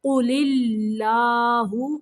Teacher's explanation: یہاں پہ اللہ کا لام باریک پڑھیں گے